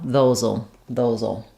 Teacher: And then in contractions with "will," we just say the ul, the dark L sound, "those'll." So it has a little bit of a schwa sound, and then my dark L